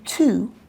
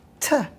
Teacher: So instead of saying to, we might say t, or the sound might completely disappear.